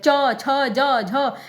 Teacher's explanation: ऊपर का जो तालु है उसको हल्का सा टच करते हैं, च, ठीक है, मतलब बिल्कुल अच्छे से नहीं, लेकिन हल्के से टच करते हैं और उच्चारण करते हैं, च, छ, ज, झ, ठीक है, इस तरीके से। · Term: अस्पर्श संघर्षी